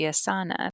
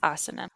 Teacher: if you're pronouncing it like you would Spanish, it would be asana because the emphasis would be on the second to last syllable